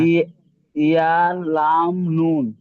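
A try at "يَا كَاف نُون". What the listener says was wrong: না এটা লাম হবে না তো, এটা ভালো করে দেখেন, ইয়া কাফ নুন, আমি এতক্ষণে দেখিয়ে দিলাম, ভালো করে খেয়াল করেননি। ইয়া কাফ নুন, হ্যাঁ।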